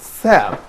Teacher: So it's fricative, which means صوت احتكاكي, or a sound that probably has a certain level of friction, and also it's called oral sound, it's interdental sound, and a voiceless sound · But for this sound, tha, what's happening here is that the airstream actually is released from the mouth through a narrow opening of friction, and we have very limited space by which the airstream is released out from the mouth. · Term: fricative sound